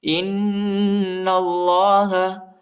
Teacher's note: إن الله حمزہ کو نون کے ساتھ ملائیں گے اور نون کو جو ہے لام کے ساتھ ملائیں گے اور ادھر غنبی کرنا ہے. اللہ کے نام کو جو ہے موٹا پڑھنا ہے، پر پڑھنا ہے